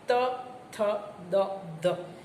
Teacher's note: ઉપરના દાંત પાસે જશે નીચેના નહીં · જીભનો આગળનો ભાગ જ્યારે દાંતના પેઢા ને સ્પર્શે ત્યારે જે ધ્વનિ નિષ્પન થાય એને દંત્ય વ્યંજન કહેવાય